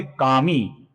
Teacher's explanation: जिसका मी दीर्घ है, इसका हमें लंबाई से ही उच्चारण करना होगा।